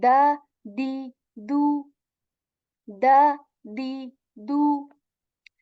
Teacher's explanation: this is a light sound and tip of the tongue it touches the back of our upper teeth